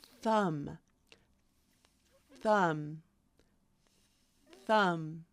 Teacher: feel in the beginning nothing right that's because it's not voiced you're not using your voice box in order to say the sound it's almost coming out like a whisper